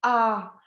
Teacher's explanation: j'ai une bouche grande ouverte, qui l'oppose au « i » qui est très serré, ou au « ou » qui est très rond comme ça